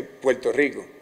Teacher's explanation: en vez de una r fuerte pues suena pues sea así Puerto Rico, suena prácticamente como una L · también posee rasgos fonéticos muy distintivos como la velarización de la R